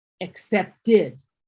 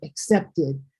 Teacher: Except because it ends in a t, we're going to pronounce the ending in an e d sound.